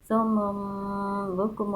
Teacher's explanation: آپ کو بتایا تھا کہ یہاں پہ اقلاب ہوتا ہے، یعنی یہ جو تنوین کا نون ہے نا اس کو میم سے بدل دیتے ہیں ، اور ساتھ آگے با آ رہا ہے اس لیے آپ